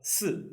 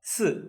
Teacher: The fourth tone was from high to low.